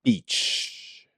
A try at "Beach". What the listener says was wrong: You said that like a question.